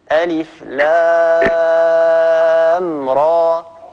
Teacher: ألف لام، هذه ست حركات نمدوها، را حركتين